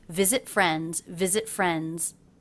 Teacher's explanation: these words as always in a thought group were very connected I had a stop T here and visit so I didn't bother to release it which would have made a little gap in my line visit